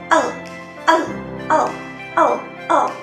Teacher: Saat kita membunyikan el getaran seperti ada getaran di samping-samping kita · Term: apikal samping